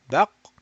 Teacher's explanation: the back of the tongue is being raised and touching the uvula that is hanging. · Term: qaf